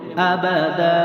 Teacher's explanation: আবাদা, হামজা জবর আবা জবর বা, দাল আলিফ দুই জবর দান, এক জবর ধরে এক আলিফ টেনে বলবো